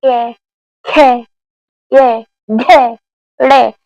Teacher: क वर्ग का जो उच्चारण करते हैं कंठ से करते हैं। जैसे क्या बोलेंगे आप, क ख ये घे ड़े, तो उसमें क्या हो रहा है, कंठ से उच्चारण हो रहा है आपका।